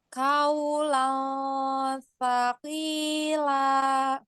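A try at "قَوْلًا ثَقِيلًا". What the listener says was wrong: Nah, jangan kaulang, apa huruf apa ini? Qaf ya, qaf. Qaulang ya.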